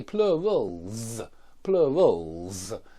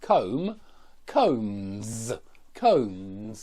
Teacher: Well, the idea here, guys, is that we use this voiced Z instead of a voiceless S when the preceding letter, the preceding sound, in fact, it's very important, it's just the sound. When the preceding sound is voiced, that S becomes a voiced Z.